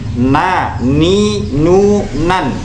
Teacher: ujung lidah mengenai gusi gigi depan atas dan ini makhrajnya huruf nun